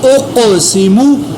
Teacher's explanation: حمزہ پیش قاف اق، سین زیر سی، اقسی، میم پیش مو، اقسمو۔ قاف کے اوپر میں نے قلقلہ بھی کیا، قاف کو پر بھی ادا کیا کیونکہ قاف موٹا بھی ہے اور حروف قلقلہ میں بھی ہے۔